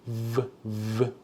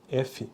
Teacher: Veja que um é sonoro, o outro não.